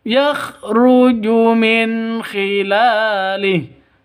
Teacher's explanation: non mati bertemu dengan kha. Jelas terang. Kenapa? Karena izhar halqi.